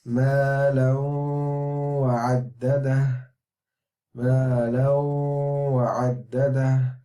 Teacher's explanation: this needs to be merged together with an idgham, with a ghunna